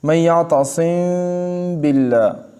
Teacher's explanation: اخفا، یعنی میم کو تھوڑا سا ادا کیا، اس کے بعد با کو سختی سے ادا کیا، ٹھیک ہے، شدت کی وجہ سے شدت اس میں آ جاتی ہے، تو اس کو کہتے ہیں اخفا، میم کو تھوڑا سا ادا کرنا اور پھر اس کے بعد با ادا کرنا سختی کے ساتھ